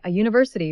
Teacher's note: we say a university because it sounds like it starts with a y